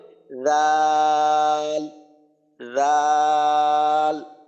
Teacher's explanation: তো আচ্ছা জাল যখন বলবেন তখন জিহ্বার আগাটা যেন দাঁতের আগার সাথে লাগে, জিহ্বার আগাটা সামনের উপরের দাঁতের আগার সাথে লাগবে, তো উচ্চারণটা এমন হবে রাল, রাল।